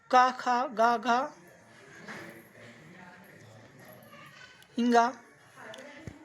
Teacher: का वर्ग के जितने भी वर्ण आते हैं कंठ से बोले जाते हैं। और स्वर देख लीजिए, इसमें छोटा आ, बड़ा आ और हा, ये कंठ से बोले जाते हैं।